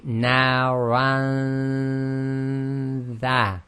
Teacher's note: So we say naran dha. So you get ready straight away for the next letter, and the sound is held in the nasal passage. So again, you have to hold your nose and check if it's actually in the nasal passage itself. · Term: ghunna